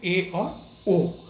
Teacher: अर्ध संवृत स्वर जिनके उच्चारण में आपका मुख आधा बंद हो